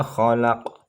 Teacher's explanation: khalaq tahada namanya qalqalah sugro karena qafnya sukunnya matinya asli